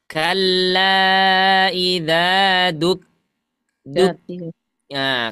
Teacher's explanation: lidah kita itu yang paling belakang ke langit-langit paling belakang juga ya tapi ke bagian yang antara langit-langit lunak dengan yang keras · huruf kaf itu di antara yang lembut sama yang keras